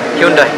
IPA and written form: ˈhjʌndɛ (Hyundai)